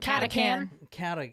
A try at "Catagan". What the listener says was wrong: Actually, it's supposed to be a G. Catagan.